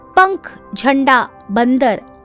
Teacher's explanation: अनुस्वार जिन वर्णों के उच्चारण में हवा केवल नाक से ही निकलती है उन्हें अनुस्वार द द्वारा दर्शाया जाता है जैसे पंख झंडा बंदर